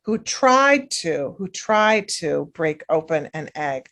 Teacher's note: you have those hard sounds at the end in the beginning you're not going to really hear tried to it's going to be blended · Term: linking